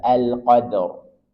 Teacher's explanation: dia dibaca tebal kita praktikkan ulang Wik alqq Nah kalau Qadr karena sebelumnya adalah Sukun dan fathah maka R di baca tebal